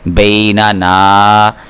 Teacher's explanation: بینا نون میں نہ جائے، ناک میں نہ آواز جائے